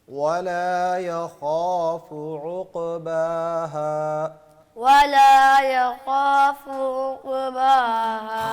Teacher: کچھ غین کے اور خا کے درمیان ہے, اس کو کلیئر کریں کہ خا ہے